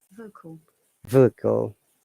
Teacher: in vocal there are two schwa sounds. There is another schwa sound after K.